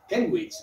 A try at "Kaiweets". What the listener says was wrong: ¿De dónde has sacado la N? Kenwich. Que no tiene N's.